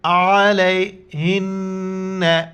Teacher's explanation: نون کے اوپر شد ہے، غنہ کریں گے، ناک میں آواز چھپائیں گے،